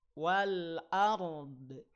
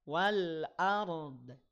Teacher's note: juga hati-hati Wal ARD ah walaupun hanya sedikit hati-hati Wal ARD tahan jangan sampai ada bunyi pantulannya jangan sampai memantul